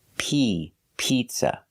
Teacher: the first vowel is a long e like green beans